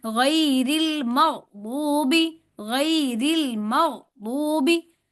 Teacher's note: जो कुछ लोग ऐसे गैरिल मग़दूबी, अनजाने के अंदर गैन के ऊपर जबर लगा के आगे चले जाते हैं, जबकि ऐसे आवाज को अपनी कंट्रोल करना है हमने। गैन साकिन है तो गैन पे आवाज कंट्रोल करनी है, फिर दाद के ऊपर हमने पेश को देना है